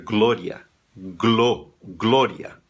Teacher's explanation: Esse O, ainda que tenha acento, não vai soar O aberto, soa fechado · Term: O fechado